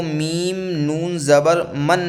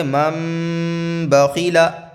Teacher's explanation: تو یہاں پہ غنہ اور اخفا دونوں ہوں گے، نون کو بدل دیں گے ہم میم سے، کیونکہ نون ساکن کے بعد با آ گیا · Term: اقلاب